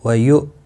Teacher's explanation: حمزہ ساکن کو جھٹکے کے ساتھ پڑھیں گے۔